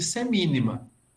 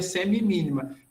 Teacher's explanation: é a queda de uma sílaba no meio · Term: Aplologia